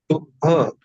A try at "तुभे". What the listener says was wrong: तुभ में एक ही मात्रा भी लगाइए।